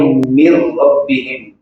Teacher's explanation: لام اور را میں صرف ادغام ہوگا، غنہ نہیں ہوگا